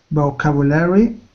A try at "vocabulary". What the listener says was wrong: The only small thing that I saw, vocabulary. Just the intonation, vocabulary.